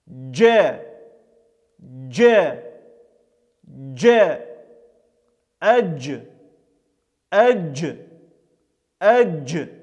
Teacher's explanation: Буква Джим представляет собой африкату, то есть слияние смычного звука Д и мягкого щелевого Ж, который произносится слитно, неразличимо между собой. При произношении этого звука мы прижимаем среднюю часть языка к среднему небу, немного ближе к передним зубам, и затем отрываем. При отрыве и образуется этот звук.